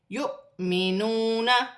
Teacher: واو خالی ہے، حمزہ پر جزم کی حرکت ہے، حمزہ پر جزم کی حرکت ہوگی تو حمزہ جھٹکے کے ساتھ پڑھا جائے گا